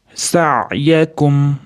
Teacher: Sa'yakum ichidan ichkariga olib kirib sukun beriladi ayn ga. Sa'yakum, mim ni ham izhor qilib, ya'ni sukunini aniq bildirib o'qiymiz